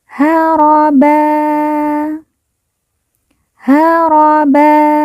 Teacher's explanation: ban di ujung haraban apabila berhenti atau wakaf berubah menjadi haraba haraba dan ba dibaca panjang dua harakat